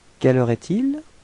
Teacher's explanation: as it's a question, it would be better to raise your voice at the end of the sentence, so it would sound like quelle heure est-il?